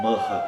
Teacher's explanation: Sempre que o H aparece no sânscrito, ele tem som como no R. é um som aspirado.